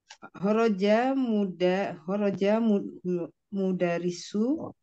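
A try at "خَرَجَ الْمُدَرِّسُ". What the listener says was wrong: Iya, khorojanya diwasal dengan alif lam, cara bacanya gimana? Khorojal, mudarisu.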